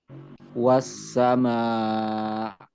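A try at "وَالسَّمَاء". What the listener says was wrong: Was-sama, bukan ain ya. Was-sama, berhentikan saja suaranya, tidak usah ditekan. Was-sama, cukup seperti itu. Betul ya, jadi jangan sampai dia menjadi huruf ain nanti.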